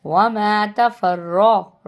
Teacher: را کو موٹا پڑھیں گے، را کے اوپر زبر ہے